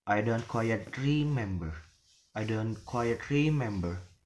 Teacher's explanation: So the word remember, like that. So the word re in the first syllable is falling, and then the word member is rising. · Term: fall to rise intonation